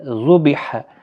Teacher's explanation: ہا کا خاص خیال رکھیں، وسط حلق والا ہے